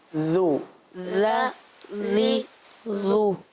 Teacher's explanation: पेश में होठ गोल होते हैं